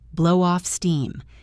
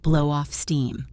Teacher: Connect the W in blow to off.